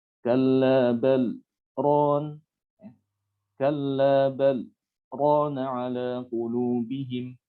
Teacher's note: Ada jeda dalam mengucapkan dari lafaz satu ke lafaz berikutnya itu ada jeda. Tapi jeda ini dia tidak dipakai untuk mengambil nafas. Ya, dan umumnya biasanya jedanya itu tidak selama ketika wakaf ya. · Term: sakta